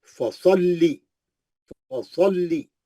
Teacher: स्वाद मोटा है, मुस्तालिया का है, मोटा पढ़ेंगे, फसल्ली, लाम 2 बार पढ़ेंगे, तजदीद है, सख्ती से पढ़ेंगे, फसल्ली 2 बार, फसल्ली, एक बार जज़म से, एक बार जेर से, है ना।